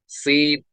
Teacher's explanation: जुबान की नोक और दोनों दांतों के अंदरूनी किनारे से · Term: विसल